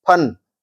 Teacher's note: ठीक है, तो ऊपर वाले शब्द को बोलेंगे फन, होठ से बोला जाएगा, दोनों होठ आपस में मिलेंगे और अलग हो जाएंगे